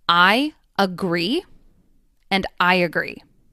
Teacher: But there is a Y sound between I and at the beginning of agree.